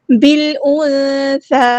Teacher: با کو ہم نے لام کے ساتھ ملا دینا ہے، حمزۃ الوصل ہمارا ڈراپ ہو جائے گا